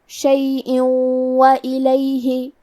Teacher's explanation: کلمت شیئن کے آخری میں حمزہ کے نیچے تنوین زیر ہے، پھر حرف الواو ہے کلمت وإلیہ، واو حروف الادغام بغنہ میں سے ہے تو ہم یہ حکم کو غنہ اور تشدید کے ساتھ ادا کریں گے